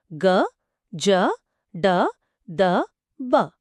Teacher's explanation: ఇవి సరళాలు ఇవి అల్పప్రాణ నాదములు అంటే వాయిస్ట్ అన్ఆస్పిరేటెడ్